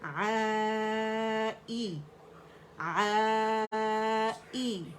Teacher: عین کو ہم نے اس کے موڑ سے نکالنا ہے اور اسٹریچ کرنا ہے اپورڈ 4 کاؤنٹس کے لیے